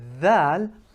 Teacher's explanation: I'm protruding my tongue way further out, and I'm making sure that the upper incisors and the bottom incisors, they are sort of sandwiching the tongue. Be careful, don't bite your tongue off.